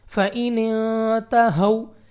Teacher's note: تو واو لین بغیر کھینچے بغیر جھٹکا دیے پڑھیں گے، یعنی جلدی سے فَإِنْ تَهَوْا۔